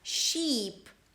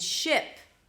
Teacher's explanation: the tense 'i' as in 'sheep' and the relaxed 'ɪ' if as in ship.